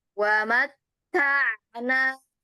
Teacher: huruf ainnya mengalir sebagian. Ada aliran suaranya sebagian. Wa mata ta baru pindah ke nun. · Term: bainiyah